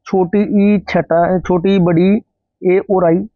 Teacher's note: जीभ के अगले हिस्से से बोले जाते हैं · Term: अग्र स्वर